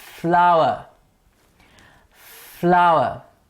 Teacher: the teeth obstruct with the lips to give us a fur sound